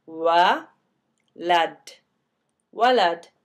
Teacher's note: So anyways, that short A vowel tells us that this waw is used as a W sound here, not as a oo sound.